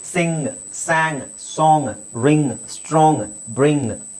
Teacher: ನಾನು ಗ ಒತ್ತುತಾ ಇಲ್ಲ ಯಾಕೆಂದ್ರೆ ನಾನು ನ ಕರೆಕ್ಟಆಗಿ ಹೇಳ್ತಾ ಇದೀನಿ ಇದನ್ನ ಸಿಂಗ್ ಅಲ್ಲ ಸಿಂಗ್ ಸಾಂಗ್ ಅಲ್ಲ